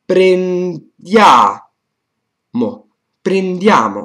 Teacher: Everything that precedes this accento tonico is up, is pronounced like a first tone in Chinese. Then you have the accento tonico, and then you stay low. So in this case, you say prin, so it's prendiamo.